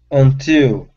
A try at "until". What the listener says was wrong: Touch your tongue to the top instead of ew with an oo sound. Ill. Until.